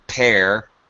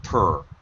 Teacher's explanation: Make sure you're not pronouncing pear. It's not a long sound. It's actually the schwa sound.